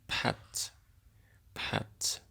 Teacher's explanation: K, P, dan T itu dibunyikan atau diucapkan dengan bunyi ledak atau plosive sound.